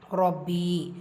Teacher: ரா ஃபத்ஹா பேச்சு வந்திருக்க வல்லினமாக ஓதணும்